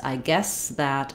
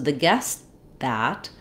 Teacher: when we have no T on a word guess, I guess that, my S sound can continue for a fairly long time and I go right to the TH.